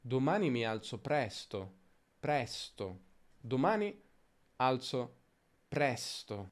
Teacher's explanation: Domani alzo presto. Quindi si allunga leggermente la sillaba press, nello specifico la consonante s. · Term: accento di frase